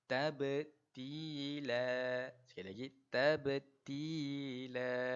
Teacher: kita kena lantunkan pada huruf ba tersebut sebab dia huruf qalqalah